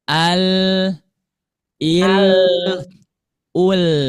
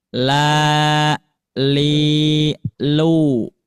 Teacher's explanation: huruf lam dari sisi lidah yang dekat dengan permukaan hingga ujungnya